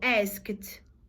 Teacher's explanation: After voiceless sounds, quando a gente tem uma consoante que não tem som, o sonzinho vai ficar de T.